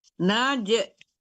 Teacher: jim mati, jim itu qalqala dipantulkan ya